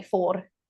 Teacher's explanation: in Indian English, they have the rolled R. So they would say for the number 4, they say four and roll the R.